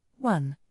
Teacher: the word one starts with an O, but it sounds like it starts with W